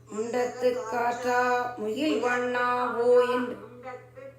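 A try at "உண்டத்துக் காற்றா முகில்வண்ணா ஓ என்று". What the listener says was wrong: முண்டத்துக்கு ஆற்றான் இருக்கிற சேர்த்து தான் சொல்லணும். ஒவ்வொரு வார்த்தையும் தனித்தனியா பிரிக்கக்கூடாது. அதனால முண்டத்து காற்றா வில்வண்ணா ஓ என்று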